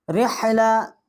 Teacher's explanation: اور اس را کو ہم ہلکا پڑھیں گے کیونکہ اس کی زیر ہے